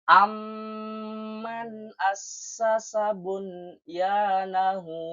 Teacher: Mim sukun bertemu dengan mim yang bertemu setelahnya sehingga menjadi satu huruf yang bertasydid dan membacanya dengan mendengung sepanjang dua harakat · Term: idgham mutamasilain